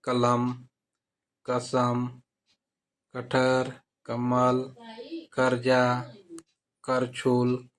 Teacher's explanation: क जो है अल्पप्राण है अघोष है